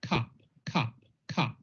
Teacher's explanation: In the South, there are going to be two different vowels. One is strut and one is foot, and they won't sound the same.